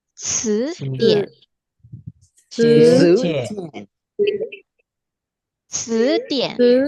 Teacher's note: Kalau C dia tipis, kemudian ada nafas yang keluar.